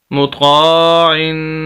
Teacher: یہاں پر زبر زیر والی بات وہی آ جائے گی، آگے یہ الف پھر آ رہا ہے، یہ بھی الف مدہ ہی کہلائے گا، طا کو ہم لمبا کریں گے، مطقا، اور طا کو موٹا بھی کریں گے کیونکہ موٹے حروف میں سے ہے۔ آگے عین کے نیچے دو زیر تنوین ہے اور اس پر غنہ کریں گے